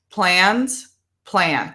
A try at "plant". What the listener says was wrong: No, because now you're putting an S, no S.